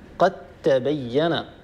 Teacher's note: الحرفين اختلاف في بعض الصفات فهنا نقرأها هكذا قد تبين الطريقة أن نحول الدال الساكنة إلى تاء ساكنة وندغم التاء في التاء فيصير النطق بتاء مشددة